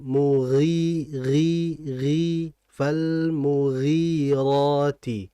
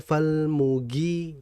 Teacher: gain ini huruf yang sangat halus tapi halusnya ini dia tetap tebal ya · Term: ghain